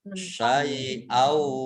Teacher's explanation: Kemudian hamzah fathah tanwin bertemu dengan huruf wawu, idgham bi gunnah, masuk dengan mendengung, yaitu mendengung wawu. Syai'au, ditandai wawunya ada tasdidnya, dibaca double.